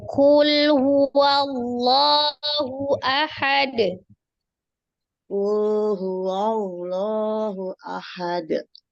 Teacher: Wallahu itu alif lam jalalah itu dibaca Alif lam jalalah atau lafuz jalalah. alif lam jalalah atau lafuz jalalah dibaca tafkhim tebal karena sebelumnya ada satu huruf yang berharokat fathah